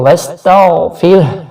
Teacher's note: غائن کو موٹا ضرور کرنا ہے، لیکن خیال کیجئے کہ یہاں پر زور نہیں دینا کہ قلقلہ واضح ہو. وَاسْتَغْفِرْ، پھر را باریک پڑھا جائے گا کیونکہ را پہ جزم ہے، اور را ساکن ہو تو اس سے پہلے حرف پر اگر زیر ہو تو اسے باریک پڑھا جاتا ہے را کو.